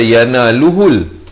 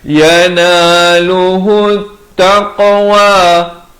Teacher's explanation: Ha baris dhammah ni di atas ta yang bertanda sabdu. Ini alif lam syamsiah. lam tidak dibunyikan.